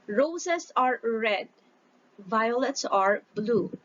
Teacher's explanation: row and red that is stress syllables because they are the long syllables